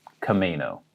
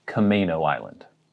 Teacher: looks like it should be but we say kameno emphasis on the may